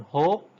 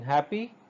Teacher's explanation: Even it's not a real consonant, because it is produced, if you remember in the previous lecture, her sound is produced at the lower end of our vocal tract, at the place of glottis or the vocal folds, and it simply passes the air through our oral cavity without any sort of special friction.